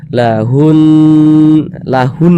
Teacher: bertasydid hukumnya ghunah musyadadah maka ini cara membacanya itu diunahkan atau didengungkan jadi suaranya itu kita tahan kita panjangkan sejenak lahun lahun hunnya tuh kita tahan kita panjangkan sejenak kita dengungkan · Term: gunnah musyaddadah